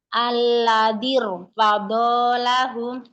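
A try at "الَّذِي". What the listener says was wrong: Lam jangan tebal-tebal, Alladir. Lamnya jangan. Dan Allah, lanya yang tebal. Ingat kemarin lam itu, mungkin kemarin nggak masuk. Lam adalah huruf istifal, jadi jangan angkat pangkal lidahnya ya. La, Allah, Alladir.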